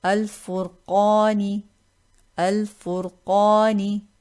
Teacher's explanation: here qaf is a letter of tafkheem. Now this alif mad will become heavy. We will read it with tafkheem.